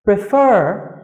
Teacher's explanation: từ prefer, trọng âm của từ này rơi vào âm tiết thứ 2